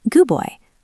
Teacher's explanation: We stop the air for the D, but we don't release it. · Boy starts with B. The D is very weak. We almost don't say it. Gooboy. It almost sounds like goo.